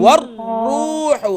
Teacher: را مشدد ہے تو اس پہ را کو ہم نے کلیئر کرنا ہے اور اس پر ڈبل لیٹر ڈبل ساؤنڈ جو ہے کلیئرلی کرنا ہے